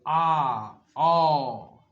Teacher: विवत स्वर के उच्चारण में मुख द्वार पूरा खुला रहता है